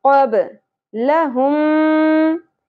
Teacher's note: बा साकिन पे क़लक़ला होगा